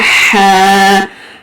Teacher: ہا middle throat سے، اس کی بھی آواز جو ہے رگڑ کر آتی ہے اور منٹ کی فیلنگ آتی ہے، ایئر جو ہے وہ باہر کو تھرو ہوتی ہے۔